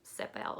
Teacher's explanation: and then unlike an American accent and a French accent the almost every syllable is stressed